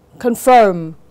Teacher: từ confirm, dấu nhấn sẽ rơi vào âm tiết thứ hai